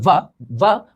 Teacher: दंत प्लस ओष्ठ से वायु स्पर्श करके जा रही है, तो इसको क्या बोलते हैं, दंतोष्ठ